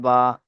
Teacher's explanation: দুই ঠোঁটের ভিজে অংশ হতে উচ্চারিত হয় বা, দুই ঠোঁটের ভিজে অংশ হতে উচ্চারিত হয় বা।